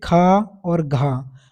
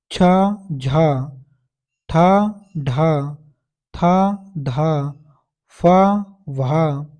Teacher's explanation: वर्ण क्या होता है महाप्राण होता है जैसे खा और घ अब इनको आप खुद के बोल के देखो तो इनमें हवा ज्यादा निकलती है और सर भी ज्यादा होता है छ झा ठ ढ था